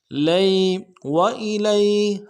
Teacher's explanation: ادا کرنا ہے، حمزہ کو بھی نرمی سے ادا کریں گے، لام کو یا کے ساتھ ملانا ہے، یا لین بغیر کھینچے پڑھیں گے